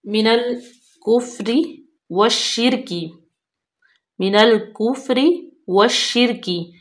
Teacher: मिनल कुफ्री व शिरकी, मिनल कुफ्री व शिरकी, ये लाम तारीफ जो है वो हरूफ शमसी है शीन, तो इसलिए जो है वाव को डायरेक्ट लाम साकन हो जाएगी। वाव को डायरेक्ट हम शीन में मिलाएंगे, इसको हम वल शिरकी नहीं पढ़ेंगे। शीन जो है उसको सख्ती से पढ़ेंगे, शद्दत भी है और उसके नीचे जेर है।